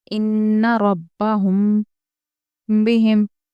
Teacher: ان ربہم بہم، را پر پڑھیں گے کیونکہ زبر والی ہے۔ ہم، دیکھیے میم ساکن کے بعد با ہے اس لیے غنہ کریں گے کیونکہ یہ ہو گیا ہے اخفاء شفوی۔